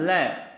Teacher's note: जीभ अवरोध बनकर खड़ी हो रही है और जो प्राणवायु थी वो क्या हो रही है? बार बार साइड से होकर निकल जाती है, तो उसे हम कहते हैं पार्श्विक व्यंजन।